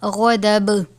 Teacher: وقف کی صورت میں با ساکن ہو جائے گا یعنی با پر قلقلہ کریں گے، تو قلقلہ کی صورت میں ہم اس کو غضب پڑھیں گے، غضب نہیں پڑھیں گے.